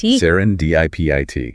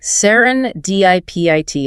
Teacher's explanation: Stressing that third syllable, dip.